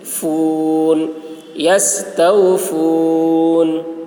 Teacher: فا بولتے وقت ہوا نکلتی ہے